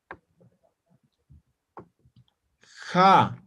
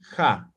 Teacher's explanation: Aquí dice fricativa. Van a ser como la J, ¿ya? La X, como la J